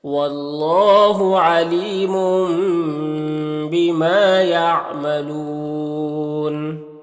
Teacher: یہاں پر تنوین کے بعد با ہے تو تنوین کو اس میم سے بدل کر غنہ اور اخفا کے ساتھ پڑھیں گے، اس کو اقلاب کہتے ہیں۔ ما میں الف مدہ ہے، نون میں وقف کریں گے تو مد عارض وقفی ہوگا، تو اس طرح سے پڑھیں گے واللہ علیم بما یعملون۔